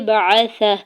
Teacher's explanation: ہا کے اوپر الٹا پیش ہے اور آگے وقف کی علامت ہے تو وقف کرنے کی صورت میں ہا کو ساکن کر دیں گے